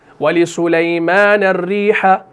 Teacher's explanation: را کو میں یہاں پر باریک اس لیے پڑھ رہا ہوں کیونکہ را کے نیچے زیر ہے, شد والا را ہے اور زیر کے ساتھ ہے.